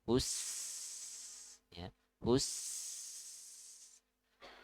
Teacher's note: Selain itu juga sin punya sifat sofir, ya. Jadi tajam suaranya.